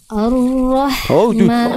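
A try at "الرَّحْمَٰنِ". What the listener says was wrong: Hamzahnya tipiskan. Jangan karena Bunda ingin melafalkan tebal huruf huruf ro, hamzahnya jangan ke bawah tapi tipiskan. Ar-Rahmani.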